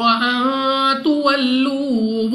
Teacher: نون ساکن کے بعد تا حروف اخفا میں سے ہے، اخفا کا قاعدہ ہے، غنہ کر کے پڑھیں گے۔